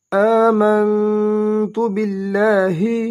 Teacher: حمزہ کھڑا زبر آ دو حرکات لمبا ادا کریں گے ، میم کو نون کے ساتھ ملائیں گے، میم نون زبر